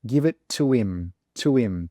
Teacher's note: So you can see this H, we have completely forgotten about the H and we're using a completely different letter. We're using a W now. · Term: connected speech